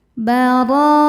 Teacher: Huruf ro dibaca secara tafkhim karena berharokat fathah. Cara bacanya ro ditebalkan. Baro, ro hukumnya mad wajib muttasil karena mad tabi'i bertemu hamzah dalam satu kata.